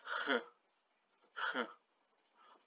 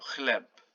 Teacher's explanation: the H we say in Polish is not it's not like the H we say in English. It's more like it comes a little bit with the throat. It's like h.